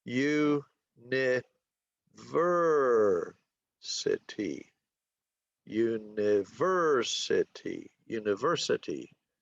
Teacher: It's on the 3rd syllable. So when we say university, so the 3rd syllable gets the stress. Okay, so it's university, university, university. · So that we call a 5-3 word because it has 5 syllables and the stress is on the 3rd syllable